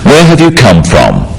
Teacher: notice also the falling tone with these questions where have you come from this makes the question sound friendly